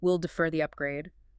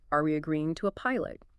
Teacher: And use appropriate tones, typically a falling tone for decisions like we'll defer the upgrade downward inflection versus a rising tone for checks like, "Are we agreeing to a pilot?" Upward inflection.